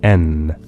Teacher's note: tongue against your gum ridge, but force the air up through your nose, which produces the sound N. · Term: nasal